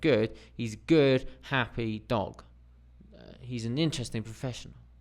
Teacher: so this sentence he's a good and happy dog takes longer than he's an interesting professional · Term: stress timed language